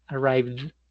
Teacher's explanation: Arrive, presente, arrived, el pasado. Note que como genera vibración al final, por eso la terminación ed suena como d